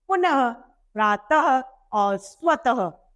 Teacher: इस विसर्ग के प्रयोग से ह की ध्वनि की उत्पत्ति होती है। जैसे ही हम किसी शब्द के पीछे विसर्ग लगाते हैं, अर्थात दो बिंदी लगा देते हैं, तो हमें स्वतः ही ह की ध्वनि का प्रयोग करना होता है।